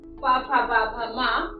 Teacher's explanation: यह नाम हमारे ओठों से उच्चारित होते हैं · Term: ओष्ठौ